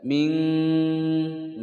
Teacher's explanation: nun sukun bertemu dengan huruf kaf, dibaca samar dan didengungkan selama 2 ketukan. Mat nun sukun bertemu kaf, disamarkan dan didengungkan selama 2 ketukan, hukum bacaan ikhfa. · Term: ikhfa ab'ad